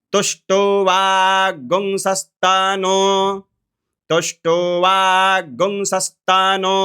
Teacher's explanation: व में आकार है, तो यहाँ पे जो गुंग होगा ये ह्रस्व गुंग होगा